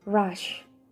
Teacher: In a retroflex consonant, the tongue tip is curled backward in the mouth. The tongue tip is curled up toward the post-alveolar region